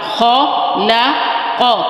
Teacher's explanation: خ موٹا ہوگا، پھر لام باریک ہے، پھر قوم موٹا ہے۔ یہاں پر دیکھیں موٹا باریک اور پھر موٹا۔